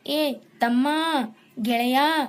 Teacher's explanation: ಇನ್ನ ಪ್ಲುತ್ವ ಸ್ವರ ಅಂದ್ರೆ ದೀರ್ಘ ಸ್ವರವನ್ನ ಇನ್ನು ಎಳೆದು ಉಚ್ಚರಿಸು ಏ ತಮ್ಮ ಗೆಳೆಯ ಈ ರೀತಿ ನಾವು ಸ್ವರವನ್ನ ಎಳೆದು ಉಚ್ಚರಿಸುತ್ತಾ ಇದ್ರೆ ಅದು